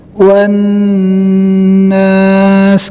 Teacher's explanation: Kemudian di sini ada huruf nun yang bertasdid, hukumnya gunnah, dibaca dengan mendengung 2-3 harokat. · Kemudian di sini ada alif lam syamsiyah. Alif lamnya tidak terbaca karena selepas alif lam ada huruf yang berharokat tasdid.